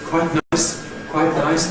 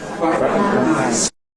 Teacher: you can do it with a nasal release, like Daniel Jones did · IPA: kwaɪtⁿ